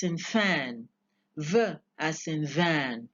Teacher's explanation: you have the Upper Front Teeth as passive articulator the adjective for this is dental and then you have as active articulator the lower lip